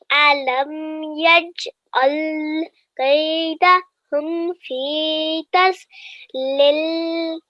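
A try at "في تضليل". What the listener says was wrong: Fi, good. Zod. So remember, this is not a zzz sound. It's not a buzzing sound. Zod, and it's a thick letter. Zod.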